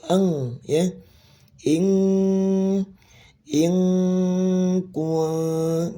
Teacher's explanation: karena huruf kaf itu makhrajnya ada di pangkal lidah ya atau lidah pangkal, makanya dia langsung suara ikhfanya tuh eng